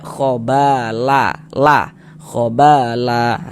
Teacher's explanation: Cara membacanya, bunyi fathatainnya, bunyi tanwin fathahnya itu kita rubah menjadi fathah. yang ini semula seharusnya kita baca khobalan, tapi karena kita berwakaf di sini terjadi mad iwad sehingga dibaca khobala, khobala, dibaca dengan panjang 2 harokat.